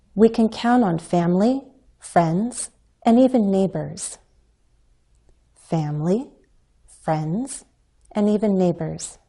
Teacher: we can use a fall rise intonation pattern in lists as an alternative to rising intonation